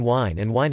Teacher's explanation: /hw/ and /w/ are being increasingly merged in supraregional Irish English